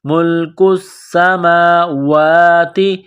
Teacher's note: میم کے اوپر کڑا زبر ہے، واو کے اوپر کڑا زبر ہے، ایک الف کے لمٹ میں کھینچنا ہے